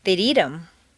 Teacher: notice that in fluent speech the th of them is frequently dropped as is the H